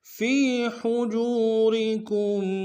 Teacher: ہا کو گہرائی سے ادا کریں گے